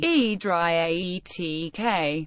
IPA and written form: ˌeɪdriˈætᵻk (Adriatic)